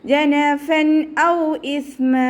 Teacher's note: തെൻവീനിന് ശേഷം ഇദ്ഹാറിൻ്റെ ലെറ്ററായിട്ടുള്ള ഹംസ വന്നു. തെൻവീനിലുള്ള നൂനിൻ്റെ സൗണ്ടിനെ വ്യക്തമായിട്ട് കേൾപ്പിക്കുക, മണിക്കാതെ വ്യക്തമായി ഒന്ന കൊടുക്കാതെ ഓതി കൊടുക്കുക